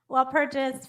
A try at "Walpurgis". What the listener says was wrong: The G is actually hard, so it's Walpurgis. Walpurgis, yeah.